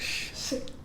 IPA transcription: ʃ